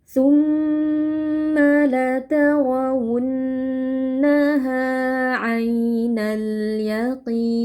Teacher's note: Kemudian di sini ada mad arid lukun kita panjangkan empat harakat · Ro tebal karena berharakat fathah